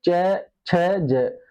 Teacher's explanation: च, छ, ज तालु। जीभ हमारी किस पे लगा? तालु पे। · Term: तालव्य